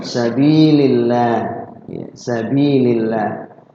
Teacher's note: Lafzul Allah dibaca tarqiq tipis karena bertemu dengan huruf sebelumnya kasrah